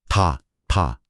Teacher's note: 한국어의 동사어미 다는 목청이 떨리는 유성음입니다. 다. 네, 목이 울리네요.